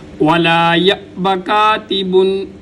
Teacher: وَلَا يَأْبَ كَاتِبٌ، وَلَا يَأْبَ، یا کے بعد حمزہ ہے، الف کے اوپر جب کوئی حرکت آ جائے تو وہ حمزہ ہو جاتا ہے، تو یہاں پر حمزہ ہے تو حمزہ کو جب ساکن پڑھیں گے تو ہم جھٹکا دے کے پڑھیں گے